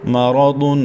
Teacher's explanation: را کے اوپر زبر کی وجہ سے پر پڑھیں گے۔